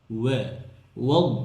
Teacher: দদকে মোটা করতে গিয়ে ওয়াওকে যেন মোটা না করে ফেলি